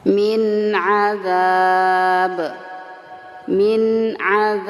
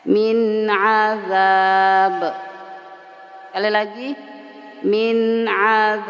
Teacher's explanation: kalau BA tetap disukunkan tapi mantul atau diqalqalahkan